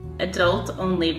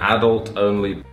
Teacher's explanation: the Americans put the stress on the second syllable and the English people put the stress on the first